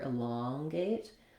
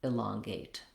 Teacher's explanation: So just like in elated, second syllable stress, first letter E says I, same thing happens in elongate, where we stress on, again, the second syllable long, and we have the ah vowel here, elongate. That means our first letter E is going to say that reduced I sound, and then we have secondary stress on the gate syllable, so we still have a clear A vowel there as well.